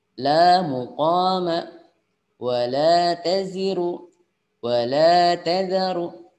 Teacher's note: lam alif ketika ada harokat fathahnya berarti dibaca panjang 2 harokat